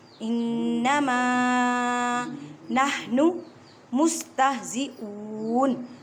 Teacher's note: اب وقف آ گیا ہے تو نون کو ساکن کر دیں